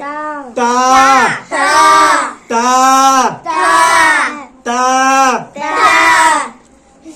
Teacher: জিভের আগা উপরে দুই দাঁতের গোড়ায়, জিভের আগা উপরে দুই দাঁতের গোড়ায় ঠিকই উচ্চারিত করতে হবে